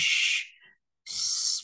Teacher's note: Tuy nhiên là âm sờ bên đây là âm sờ nặng, mình sẽ cong lưỡi, cuộn lưỡi vào bên trong và đẩy luồng hơi mạnh ra